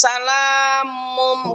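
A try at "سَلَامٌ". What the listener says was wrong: Salam. Salam. Nggak mun lagi. Salam. Bukan salam. Salam. Salam. Enggak lagi. Tapi dia wakaf Ibu. Ya. Salam.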